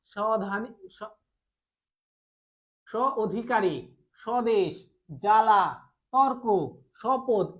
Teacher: শব্দের শুরুতেই যদি কোনো ব্যঞ্জন বর্ণের সাথে ব যুক্ত হয় তাহলে সেই ব এর উচ্চারণ হয় না। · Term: ব ফলা